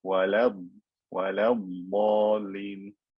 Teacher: Don't say وَلَضْ وَلَضْ, that's a round lam, make it skinny.